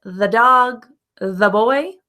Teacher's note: the with the consonant is the schwa